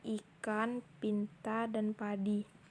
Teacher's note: vokal tinggi depan tak bulat vokal ini dibentuk kedua bibir agak Terentang ke samping